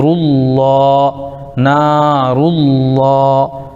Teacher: یہاں پر پیش ہے اس لیے لفظ اللہ کے لام کو پر پڑھیں گے